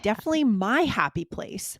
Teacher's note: you emphasizing my really shows, that you want to, explain that this is special to you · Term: emphasized my